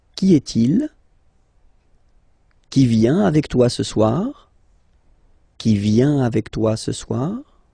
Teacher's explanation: you will have to raise your voice a little bit at the end of the question.